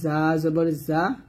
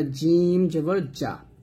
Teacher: যা মাখাসটা জিহ্বার আগা নিচে দাঁতে লাগাতে হবে, আর জিম জিহ্বার মধ্যখান উপরে তালুর সঙ্গে লাগাতে হবে